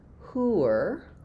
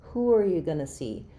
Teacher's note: So I could write it as hooer, and notice as I move from that rounded oo to the unrounded hooer, you're going to have a little bit of a w sound in there.